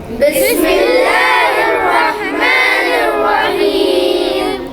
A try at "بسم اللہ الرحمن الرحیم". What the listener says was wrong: اچھا, دیکھیں فائدہ نہیں ہو رہا. اب آپ بڑے ہیں, چھوٹے بچوں کی طرح نہیں ہیں, چیخنا نہیں, ہم کو آواز کو اونچی نہیں کرنا ہے, آواز کو کم رکھیے.